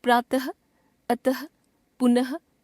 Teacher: विसर्ग को भी हिंदी वर्णमाला में स्वरों के साथ लिखने की परंपरा है। इसका उच्चारण केवल संस्कृत से आए कुछ तत्सम शब्दों में किया जाता है और उच्चारण ह की तरह होता है।